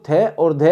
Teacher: थे और धे अधिक वायु के साथ महाप्राण